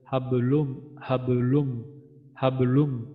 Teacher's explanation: এটা হচ্ছে আমাদের 3 নম্বরের কলকলা, সর্বনিম্ন কলকলা